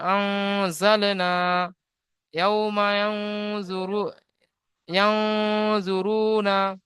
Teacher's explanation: আলিফ মাদ্দাহকে এক আলিফ পরিমাণ টান দিয়ে পড়তে হয়, যেমন আনজালনা, ইয়াউমা ইয়ানজুরুনা, ইয়া নুন জাবার ইয়াও, জফে জু ইয়ানজু, র ওয়াফে জুরু, ইয়ানজুরু, নুন জাবার না, ইয়ানজুরুনা।